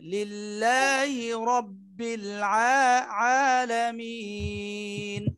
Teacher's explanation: কিন্তু এই যে এক আলিফটা আরেকটু কম দিতে হবে লিল্লাহি রব্বিল এক আলিফ এত টান না আরো কম টান দিতে হবে